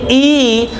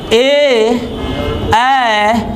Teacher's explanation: ई बोल रहे हैं तो मुंह का ठोर क्या हो रहा है भाई? फैल जा रहा है, तो उसे हम आवर्तमुखी स्वर बोलेंगे।